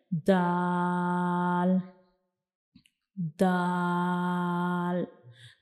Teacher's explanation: हमारी जुबान की जो नोक का ऊपर वाला हिस्सा है यह ऊपर की तरफ जाएगा और जो हमारे सामने वाले दो दांत हैं उनके जो अंदर वाली साइड पे मसूड़े हैं उनको टच करेगा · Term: दाल का मखरज, दाल का मखरिज